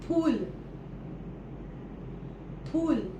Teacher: मराठीमध्ये फ चा उच्चार फ असा होतो दोन्ही ओठ एकमेकांना चिकटवून